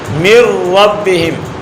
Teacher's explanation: نون کا را میں مکمل ادغام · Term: ادغام تام